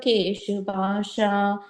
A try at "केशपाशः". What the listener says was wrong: Second line, Keshapashaha. Visarga there, okay.